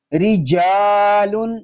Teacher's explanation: را اس لیے باریک ہے کہ را کے نیچے زیر آ گیا ہے۔ رجال، را باریک، الف مدہ، یہاں بھی الف باریک ہوگا، لام باریک، تنوین